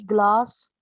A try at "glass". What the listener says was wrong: Glass. Grass you are saying.